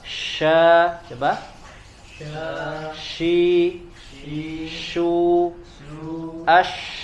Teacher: dia bagian tengah lidah naik ke langit-langit, naik ke atas tapi tidak menempel ke langit-langitnya, hanya mengarahkan lidah bagian tengahnya ke langit-langit ya, tidak menempel sehingga makhrajnya dia terbuka. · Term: huruf shin